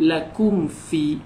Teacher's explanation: Anak tak perlu tengok pun huruf selepasnya, cuma tengok mim mati ada tanda mati sudah memadai untuk anak-anak tahu itulah bacaan bagi izhar syafawi. Dibaca dengan jelas saja, tak perlu pun masuk pada huruf selepasnya.